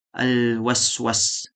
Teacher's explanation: suara menyerupai suara burung yang mengiringi ketika mengucapkan salah satu dari 3 huruf yaitu sod, sin, dan zai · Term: sofir